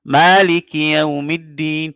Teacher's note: Hafsun dia membaca dengan mat. Maliki panjang 2 harakat.